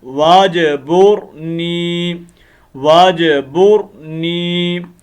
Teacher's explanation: یہ حمزہ وصلی ہیں اور وسط کلام میں گر جاتے ہیں، یعنی جب کلام کے درمیان میں آتے ہیں.